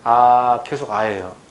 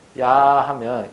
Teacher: 아가 단모음이고 야가 이중모음이거든요.